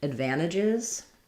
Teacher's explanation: advantages or advantages is stressed on the van syllable